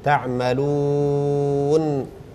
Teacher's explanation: يعني الواو تكون الشفتين مضمومة، لما ننطق المد نقف على النون ونرجع الشفتين وراء